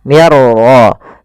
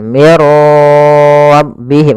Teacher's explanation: masukkan nun ya kepada huruf ra sehingga suara nunnya hilang, langsung terbaca dengan jelas suara ra-nya. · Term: idgham bila gunnah